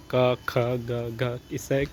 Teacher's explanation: कंठ से ये निकल रहे है। है ना? उच्चारण स्थान कंठ है।